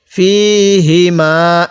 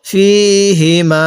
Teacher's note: এই হাটা উচ্চারণের সময় হালকা আওয়াজ বের করব। ফিহিমা, এরকম ভাবে পড়ব।